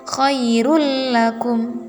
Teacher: Cara membacanya sama dengan sebelumnya, yaitu dileburkan, namun tidak didengungkan. Jadi nunnya itu dilebur ke huruf lam atau ro, tapi tidak dengung. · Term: idgham bila gunnah